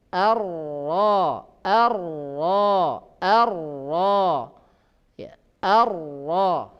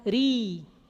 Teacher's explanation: Jadi ketika ro tebal maka pangkal lidah terangkat.